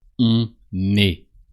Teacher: you pronounce the N of on because the following word starts with a vowel.